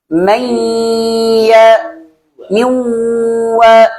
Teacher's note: Nah ketika wa atau ketika ya sudah nggak ada dengung lagi.